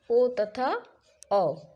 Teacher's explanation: कंठ और ओठ दोनों की आवश्यकता ओ और औ के उच्चारण में पड़ती है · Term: कंठ और ओट्स